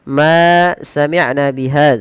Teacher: Ma kita panjangkan sepanjang dua harakat yang kita beri nama dengan hukum tajwidnya berupa mad thii mad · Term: mad asli